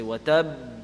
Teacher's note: instead of making the normal qalqala sound, the double sound, it's held a little bit.